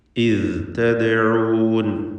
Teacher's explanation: ദാലിൻ്റെ സുക്കൂൻ ഖൽഖല സുഗ്റ നൽകി ശബ്ദം ഹറക്കത്ത് പോലെ ചലിപ്പിക്കണം.